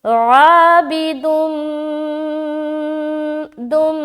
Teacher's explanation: آگے عابد، عین الف زبر ع، عابد، یہاں پر دو پیش کی تنوین کے بعد میم ہے. یہاں پر ہم ادغام کے ساتھ غنہ کریں گے ملاتے ہوئے